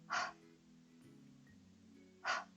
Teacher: 입을 살짝 벌리고 바람을 빼면서 하 하고 소리를 내보세요.